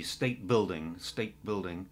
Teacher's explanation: there's a slight tendency to say state with a D, state building.